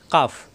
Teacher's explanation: কাফ জিব্বার গোড়া থেকে একটু আগে বাড়িয়ে কাফ।